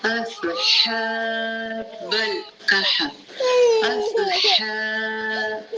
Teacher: صاد کو پر پڑھیں گے، اس سین کی سیٹی نہیں آئے گی